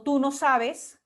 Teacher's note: la mayor fuerza de voz está en tú, ¿no? Y bueno, y en la palabra sabes. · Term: Pronombre tónico